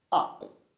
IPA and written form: ʌp (up)